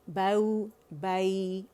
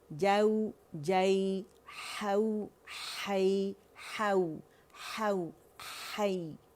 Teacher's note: نرمی سے واو سے ملائیں، ایک کاؤنٹ کے لیے اوپر لے کے جائیں آواز اور نرمی سے یا سے ملائیں